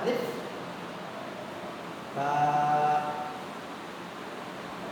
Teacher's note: বা হরফটি একালিফ পরিমাণ টানতে হয়